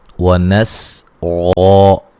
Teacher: سین کو باریک سیٹی سے ادا کریں گے